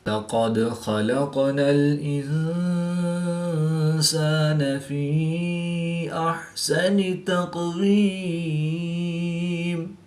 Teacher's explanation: یا مدہ کے بعد حمزہ دوسرے کلمے میں ہے تو یہاں پر مد منفصل ہوگی، 2 سے 3 الف تک کھینچ کر پڑھیں گے